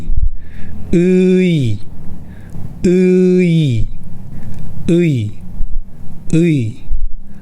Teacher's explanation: And “ㅣ” sound is similar to “ee” sound from “tree”. So, pronounce “ㅡ” and then “ㅣ” in sequence.